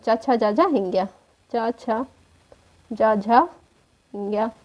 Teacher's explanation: चा वर्ग के जो है वे कहां से तालव्य से उच्चरित माने जाते हैं